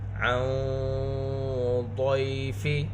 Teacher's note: نون ساکن کے بعد حروف اخفا میں سے ضاد ہے، یہاں پر اخفا ہوگا اور اخفا کی آواز موٹی ہوگی